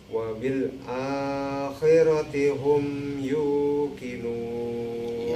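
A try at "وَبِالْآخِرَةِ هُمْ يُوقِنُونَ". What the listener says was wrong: Ya.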